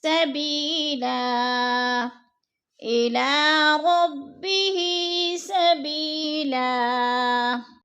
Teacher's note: اور سبیلن، دو زبر تنوین ہے، وقف کی صورت میں ہم نے دو زبر نہیں پڑھنے بلکہ دو زبر کو ایک زبر میں بدل کر پڑھنا ہے